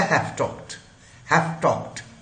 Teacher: अगला अगर हमारा वॉइसलेस आ रहा है तो पिछले को भी वो फाइनल कंसोनेंट को वॉइसलेस बना देता है। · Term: रिग्रेसिव असिमिलेशन